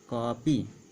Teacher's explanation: वे स्वर या वह वर्ण जिसका उच्चारण आ और ओ के बीच होता है वह आगत कहलाता है। जैसे कापी, तो यहाँ हम लोग इसको कापी नहीं कहेंगे या कॉपी नहीं कहेंगे, बल्कि आ और ओ के बीच का यहाँ उच्चारण करेंगे, अर्थात कॉपी। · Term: आगत चिन्ह